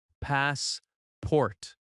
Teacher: That first part is stronger and a little longer. The second syllable is softer. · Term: stress